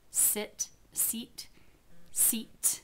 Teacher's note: Seat has the aspiration at the end, and I could actually literally feel the air coming over my bottom lip.